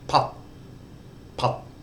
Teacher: Now, as an initial consonant, that makes a D sound. As a final consonant, it makes an unreleased T sound.